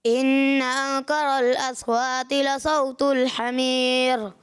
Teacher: را کو باریک کرنا تھا، پر کر دیا